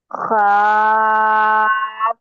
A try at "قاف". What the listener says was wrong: ایک منٹ ایک منٹ، یہ خواہ کی طرح نہیں پڑھنا ہے ہمیں اس کو. یہ پڑجیب کے اندر سے پڑھنا ہے اس کو اپنے کو. قاف.